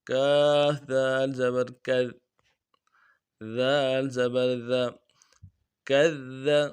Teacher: دال کو نرمی سے ادا کریں گے، باریک کریں گے